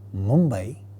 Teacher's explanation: And in the final example, Mumbai, because the following consonant, that is the second member of the cluster, is a labial sound ba, therefore it is going to take a labial nasal as the first member of the cluster, and hence we have the sound ma.